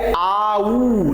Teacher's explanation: देखिए ओठ आपके क्या हो रहे हैं, पूर्णतः गोल हो रहे हैं